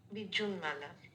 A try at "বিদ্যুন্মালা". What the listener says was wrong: একটু দাঁড়াও, এইটা কিন্তু ময়ে ময়ে আছে। তুমি বিদ্যুন মালা বললে, মানে এটা মানে সম্মানটাকে অনেকে সম্মান বলে, এটা কিন্তু ময়ে ময়ে। কেন ময়ে বলে? হ্যাঁ, বিদ্যুৎ মালা এই শব্দটা যদি হয়, বিদ্যুৎ দয়ে দফলা পালিতে জয় জয় হয়, আর তয়ে ময়ে যেটা হচ্ছে সেটা ময়ে ময়ে হয়ে গেল, মানে সমান হয়ে যাচ্ছে, পরিবর্তন হয়ে বিদ্যুৎ মালা।